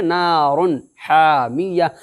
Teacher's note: بلا غنہ کے جلد ایسے ہوتا ہے کہ یعنی خیشوم کے اندر میں، ناک کے بانسا کے اندر میں آواز کو چھپانا نہیں ہے بلکہ ظاہر کرنا ہے، جلدی سے بولنا ہے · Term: اظہار